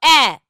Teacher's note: এসছো এ এর ক্ষেত্রে যেটা হচ্ছে সম্মুখ আর প্রসারিতটা কমন অর্থাৎ জীব সামনের দিকে এগিয়ে থাকছে ঠোঁটটা প্রসারিত থাকছে